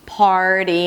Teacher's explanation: So your tongue is kind of like preparing for that TD sound. It's a flap T. So it actually sounds like a D sound.